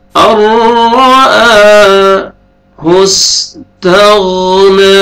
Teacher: नून साकिन के बाद हरूफ यरमलून में से रॉ है, इदगाम करेंगे बगैर गुन्ना के साथ